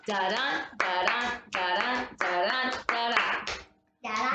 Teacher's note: each alternating syllable is first unstressed and then stressed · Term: iambic pentameter